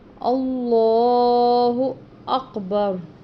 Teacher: اس لام سے پہلے حمزہ پر یعنی کہ الف یا حمزہ پر زبر ہے، اس لیے اس لام کو موٹا پڑھیں گے، پر پڑھیں گے، اور لام کے اوپر کھڑی زبر ہے، اس وجہ سے اس کو لمبا بھی کر کے پڑھیں گے، اللہ اکبر۔